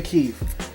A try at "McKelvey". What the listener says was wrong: Or McKelvey. I could be wrong, but it's got an L in there.